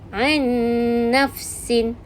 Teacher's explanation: Ni nun sakinah bertemu dengan huruf nun. Baca dengan dengung 2 harakat.